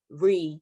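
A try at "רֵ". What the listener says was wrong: Excellent. That's right.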